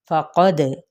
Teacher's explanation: फ़क़द, क़ाफ पुर है, दाल पे कलकला किया जाएगा